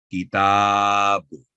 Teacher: तो यहाँ ता के ऊपर फतह और साथ आगे अलिफ है, तो ता की आवाज 2 सेकंड लंबी होगी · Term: अलिफ मद्दा